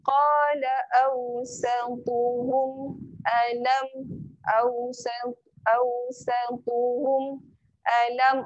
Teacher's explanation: mim yang bertanda sukun jangan didengungkan. Yang ni tak boleh dengung. Sebab mim yang bertanda sukun.